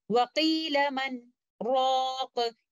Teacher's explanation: we recite it with Sakht, a breathless pause. So instead of doing Idgham here, we will recite Noon Sakina and letter Ra clearly, because due to Sakht, both of the letters are not meeting each other, and we recite them like this, وَقِيلَ مَنْ رَاقُ.